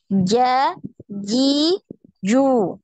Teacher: naik itu Tengah lidah ke langit-langit ya Ja sampai nempel ya Tengah lidahnya itu sampai nempel di langit-langit